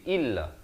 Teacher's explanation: Jangan baca illa tapi baca illa. Hamzah pada kasrah bunyi i bukan bunyi e. Jadi bila bertemu lam jadi illa.